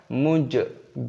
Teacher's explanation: Perhatikan lamnya ini dibaca sukun ataupun mati, dibaca bil muj. Jimnya berharokat sukun maka dikolkolah, dipantulkan suaranya. Muj, ja itu namanya kolkolah ataupun pantulan suara dari huruf jim ini.